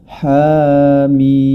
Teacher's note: mimnya tergolong dalam mad lazim maqal Harfi yang dibaca dengan enam harakat